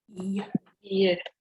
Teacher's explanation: That sound is produced with my tongue approaching the hard palate. It doesn't touch it, but the region is the hard palate. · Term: hard palate sound